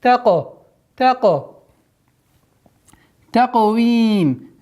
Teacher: Мягкий и твердый. Каф, твердый звук, плюс еще правило калькаля.